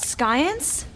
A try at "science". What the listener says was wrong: that's science, not science. The C is silent.